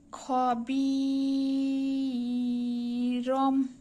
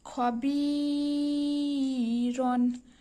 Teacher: তানভিনের বাম পাশে বা থাকায় এখানেতে রন উচ্চারণ না হয়ে রম উচ্চারণ হবে। এখানেও লম্বা করতে হবে।